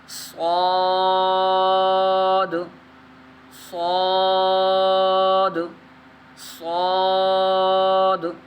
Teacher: صاد حروف مصالحہ میں سے، اس لیے اس کو کیا کرنا ہے، ہم نے موٹا پڑھنا ہے